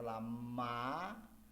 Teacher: Olha, quando eu falo olha lá, falei o A, ela deu passagem livre da corrente de ar pela boca